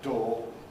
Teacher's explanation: You can say door with a kind of centering schwa end to the diphthong perhaps, but most people have a monophthong there, door, and that's what we now recommend.